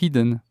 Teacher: Donc en fait, le I, il n'y a pas de diphtongue. C'est pas hidden, c'est hidden.